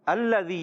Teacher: زال کی ادائیگی کلیئر رکھنی ہے، زا سے نہیں بدلنا چاہیے. یا مدہ ایک الف کھینچ کر ادا کریں گے. · لام مشدد ہے، رک کر ادا کریں گے